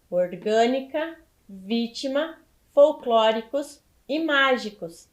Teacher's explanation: elas são proparoxítonas porque elas são acentuadas na antepenúltima sílaba